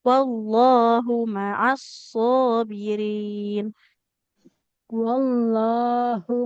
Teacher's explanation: wallahu hanya domah tidak ada wau ya, enggak boleh kita panjangkan